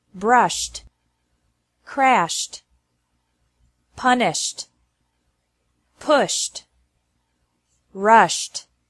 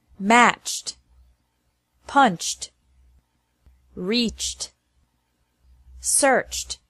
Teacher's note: ed is pronounced like t after verbs ending with an sh sound brushed crashed punished pushed rushed and after verbs ending with a